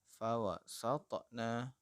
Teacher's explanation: pada contoh kedua ini huruf qalqalahnya adalah huruf to, maka kita baca fawasatna dengan cara memantul juga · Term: qalqalah sughra